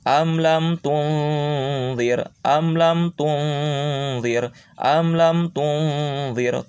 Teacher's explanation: nun sukunnya berbunyi antara n dan eng. Caranya adalah ketika tung tempelkan ujung lidah ke ujung gigi atas.